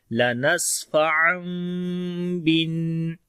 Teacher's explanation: لَنَسْفَعًا، سین کے اوپر صفت ہمس اور صفت صفیر ہوگی اور تنوین کے بعد با آ گیا تو یہاں پر اقلاب ہوگا، یعنی نون کی آواز کو پہلے میم میں بدلیں گے، اس لیے یہاں پر چھوٹا سا میم آ گیا ہے. · ٹھیک ہے، اور پھر وہی رول آ جائے گا جو اوپر ہم نے پڑھا اخفاء شفوی کا، میم ساکن کے بعد جب با آ جائے تو پھر یہ میم ساکن ہو جاتا ہے، اس کے بعد با آ جاتی ہے، تو اخفاء شفوی بھی ہو رہا ہے اور اقلاب بھی ہو رہا ہے. تو میم کی آواز کو چھپائیں گے اور ہونٹ آپس میں ملیں گے، نرمی کے ساتھ آواز آئے گی